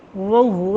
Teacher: वो को दोनों होठ ना तमाम गोल करते हुए पढ़ेंगे तो वो का मखरज अदा हो जाएगा।